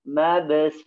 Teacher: Sifat yang pertama adalah sifat hams, ya. Sifatnya hams, maka ya kita berikan keluar napasnya.